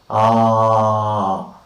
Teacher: When we say the sound ah, the tongue is at the extreme bottom of the oral cavity or the mouth cavity, and we call such sounds open vowels.